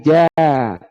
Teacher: Kapan jadi ja? Ketika lidahnya naik ke atas. Ditempelkan ke langit-langit jadi ja.